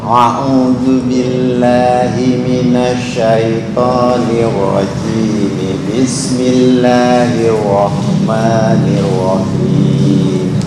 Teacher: Langsung hanya 2 harokat, nggak boleh lebih ketika wasal.